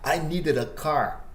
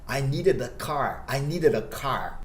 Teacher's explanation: O D combina com o artigo a, né? E fica da.